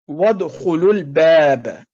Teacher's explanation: وادخلوا الباب، تو آپ نے دیکھا ہے کہ لام کے ساتھ مل رہا ہے، اس میں واو، الف اور الف یہ سائلنٹ ہو گئے، گر گئے اور ان کو نہیں پڑھا گیا تلفظ میں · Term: سائلنٹ حروف